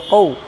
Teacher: یہاں پر ہے واویلین، واو ساکن سے پہلے زبر ہے تو واویلین، سمجھے، نرم آواز کے ساتھ جلدی ادا کریں